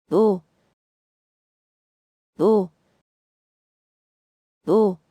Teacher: This letter sounds close to the O in so, but shorter.